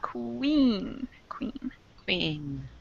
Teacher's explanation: it has kind of a w sound before the vowel sound